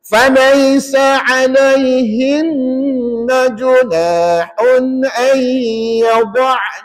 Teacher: Dengung bunyi sengau dua harakat. Maka dibacaunahun itu ketika wakaf. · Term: wajibul gunah